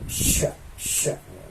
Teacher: Dikeluarkan dengan mengangkat tengah lidah ke langit-langit. Sya, sya. Jadi lidah pinggirnya tengahnya itu ditempelin ke langit-langit. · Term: shin